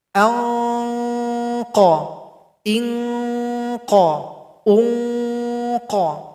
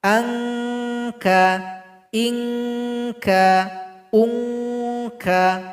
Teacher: Bedanya qaf ini dibaca tebal sedikit, kaf tidak dibaca tebal. Kedua-duanya boleh dibaca ang, ing, ung.